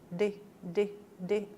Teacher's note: já o d é diferente ó D de de a língua Vai um pouquinho mais para trás